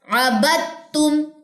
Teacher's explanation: یہ دال نہیں پڑھا جائے گا، با کی زبر کو تا سے جوائننگ، یہاں پہ ادغام ہے دال کا